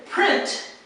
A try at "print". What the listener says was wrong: you have to have the T sound, yes, but you don't necessarily want it to be 2 syllables. So don't say print. That's like 2 syllables.